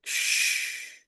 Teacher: huruf shin dia punya sifat tafashi ya. Jadi udara menyebar dengan kuat ya dari mulut.